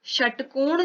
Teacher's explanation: षटकोण जब बोल रहे हैं तो षटकोण में मूर्धा को छुएगी तो मूर्धन्य हो जाता है